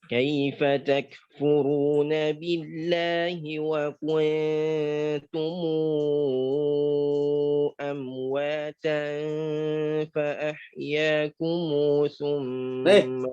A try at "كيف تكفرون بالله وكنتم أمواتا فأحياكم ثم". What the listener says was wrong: enggak. Kalau fayakum silahnya enggak berlaku. Iya, silah dengan tul.